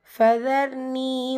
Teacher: ரா சுக்கூன் இருக்கும்போது முந்தைய எழுத்தை நம்ம கவனிக்கணும். ஃபத்ஹா வந்திருக்கனால அந்த ரா சுக்கூனை வல்லினப்படுத்தி ஓதணும்.